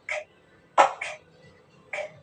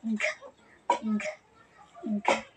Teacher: Ang K at G ay napabilang sa pasara. Ang K ay walang tinig na binibigkas na K, K, K. Halimbawa, kalye, kami. Ang G naman ay may tinig na binibigkas na G, G, G.